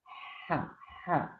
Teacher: Kholfi, berasal dari tenggorokan, tapi memiliki sifat samar atau pengucapan huruf disertai dengan keluarnya napas.